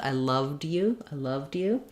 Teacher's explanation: So when we're saying loved, we do need to have the v, d, the voiced sound.